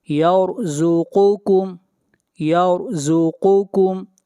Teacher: را کو موٹا پڑھا جائے گا، را سے پہلے زبر ہے